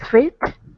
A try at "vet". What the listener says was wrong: Not with a W, but with a V. Vet. V.